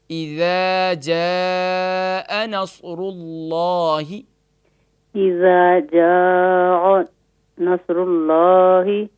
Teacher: یہاں اذا میں تو اس کو، کیونکہ ذال کے بعد الف ہے تو ہم اس کو تھوڑا سا کھینچیں گے، ایک الف کی مقدار. اذا جا نہیں کریں گے بلکہ اس کو تھوڑا سا کھینچیں گے.